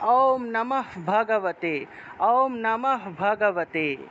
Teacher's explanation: তারপরে বিসর্গ, বিসর্গ যদি বাক্যের বা শব্দের মাঝখানে থাকে তাহলে অর্ধ হ উচ্চারণ হয়, অর্থাৎ হসন্তযুক্ত একটা হ উচ্চারণ হবে।